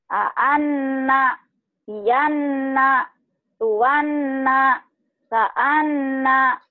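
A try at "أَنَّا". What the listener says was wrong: Gunanya kurang. Gunanya kurang. Gunanya kurang. Kurang panjang. Anna, Yanna, Tuanna. Tiga ketukan. Ya, dua sampai tiga ketukan.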